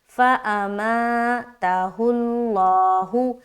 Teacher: अब यहाँ पर देखिए लफ्ज अल्लाह का लाम से पहले पेश है, तो यहाँ पर ऑटोमेटिक क्या हो गया, लफ्ज अल्लाह का लाम मोटा हो गया